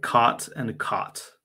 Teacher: I would say caught and caught right so it's the same exact vowel for me